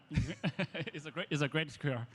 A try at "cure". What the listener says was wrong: It's a great skr, right? So there's an example of not pronouncing the vowel sound, the stressed vowel sound in the content word in a way that's clear, right? He's saying skr, right? He's got no openness, he's got no pitch, right? Instead of skr, I would say scare. Look at my mouth moving. I'm highlighting it.